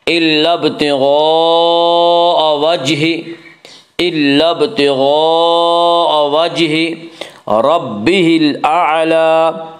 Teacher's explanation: را کے اوپر زبر پیش ہے تو را کو پر پڑھا جائے گا